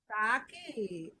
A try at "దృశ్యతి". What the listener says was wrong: దాకి వట్రసుడు అండి, వట్రసుడి. అరుకారం దృశ్యతి. దా అండి, దా దా దా దా.